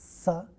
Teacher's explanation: we can have a dental or alveolar voiceless fricative, which is sa in the initial position of the cluster